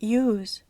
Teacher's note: la pronunciación de la s cambia el significado un ejemplo es use pronunciada Con la s Sonora es un verbo use usar pero con la s sorda